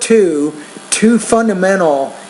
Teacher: you have to pronounce the T with more air